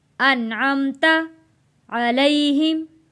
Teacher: गुन्ना अदा नहीं करना नून साकिन पे, क्योंकि अगला लफ्ज़ हरूफे हल्की आ गया है।